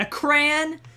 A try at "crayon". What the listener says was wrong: I hate how you say cran. It's awful.